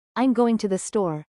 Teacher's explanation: Said matter-of-factly, it's pretty flat. But with excitement, I'm going to the store.